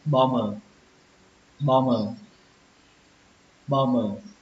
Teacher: Nó có âm bờ phía sau, nhưng mà âm bờ này chúng ta sẽ không đọc, nó là âm câm các bạn nhé. Và các bạn hãy đọc cái âm mờ này thôi.